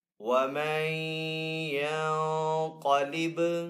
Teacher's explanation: نون ساکن کے بعد یہاں پہ یا حروف یرملون میں سے تو یہاں پہ ادغام ہوگا، یعنی کہ ادغام والا غنہ کر کے پڑھیں گے